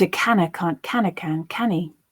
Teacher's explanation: Can, where it's being used as a noun, as a synonym for tin, is stressed, as a noun would be stressed, as a content word would be stressed.